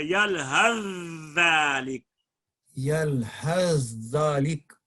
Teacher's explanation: دونوں حرف کو اس طرح ملائیں کہ دوسرا حرف مشدد ہو جائے اور زبان ایک ہی طرح اٹھے، ایک ہی دفعہ اٹھے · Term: ادغام